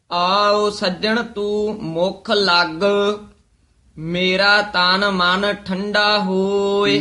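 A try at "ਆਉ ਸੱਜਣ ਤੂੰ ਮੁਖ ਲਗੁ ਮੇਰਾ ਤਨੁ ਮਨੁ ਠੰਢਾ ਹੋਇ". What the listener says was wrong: ਲੱਗ ਬਹੁਤਾ ਕਸ ਕੇ ਨਹੀਂ ਬੋਲਣਾ ਲੱਗ ਦਰਮਿਆਨਾ ਜਿਹਾ ਬੋਲਣਾ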